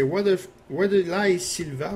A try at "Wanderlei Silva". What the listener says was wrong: Vanderlei, ça se prononce. Ouais, toutes les W, c'est des V, eux autres.